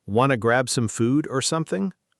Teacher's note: Want to reduced to wanna and something losing its final G sound becoming summon, which is extremely common in casual speech